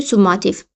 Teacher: Birinci saitimiz U qalın, ikinci saitimiz A qalın və üçüncü saitimiz İ incə. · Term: ahəng qanunu pozulmuşdur